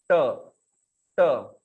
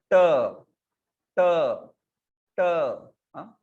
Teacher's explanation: जिह्वा जो है ऊपर मूर्धा को स्पर्श करके ट ऐसा वर्ण होता है। ट ट, जैसे आप चकलिंग साउंड भी करते हो ना कभी ऐसे, तो वो वैसा ही है वो। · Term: मूर्धन्य